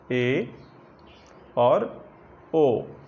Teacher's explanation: मुख थोड़ा सा खुलेगा लेकिन आधे से कम खुलेगा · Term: अर्ध संवृत्त स्वर